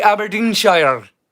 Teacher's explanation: we pronounce a R in Scotland with a hard rolling · You hear the hard rolling R in our dialect up here.